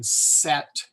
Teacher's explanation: the vocal cords aren't used to produce the S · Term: unvoiced S